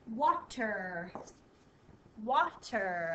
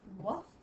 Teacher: So the A is not saying its name. It's saying an ah sound.